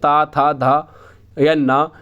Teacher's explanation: उच्चारण स्थान आपका दांत से होता है, अर्थात दंत का प्रयोग किया जाता है।